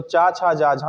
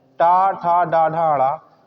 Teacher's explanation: तो टा वर्ग को ही क्या कहा जाता है? इसी को मूर्धन्य कहा जाता है।